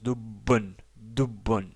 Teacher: il y a ici un doublement de la consonne ba. Sinon, on aurait prononcé dobon.